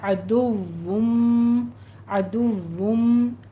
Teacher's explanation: वाव को दोनों होंठों को गोल करके अदा कीजिए